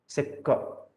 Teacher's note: That is why immediately after the free flowing vowel sounds, you experience the obstruction with ka. And ka, when you articulate, say ka, there is a minimum release of air